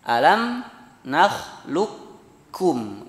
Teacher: lukum langsung ke kaf. Tidak ada sisa qaf di sana, ya. Itu idgham mutaqaribain yang kedua yang ada di riwayat Hafs. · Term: idgham kamil